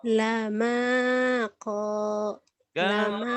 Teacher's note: lama kok maknya panjang koknya juga panjang sama-sama panjang satu alif dua ketukan